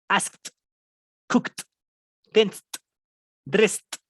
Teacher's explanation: el sonido de la K al final y juntas la T. Esa ED se pronuncia como una T. Juntas como tal como tus dientes, así, y vas a pegar la lengua, como si la estuvieras pegando así de asked, cooked, tensed, dressed.